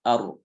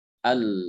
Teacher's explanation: Ro itu ada getaran sedikit. Sementara lam, itu tanpa getaran. Ujung lidahnya itu tidak disertai dengan getaran.